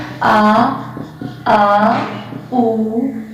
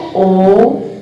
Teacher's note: पश्च स्वर यानी कि जीभ के पीछे वाले भाग से बोले जाते हैं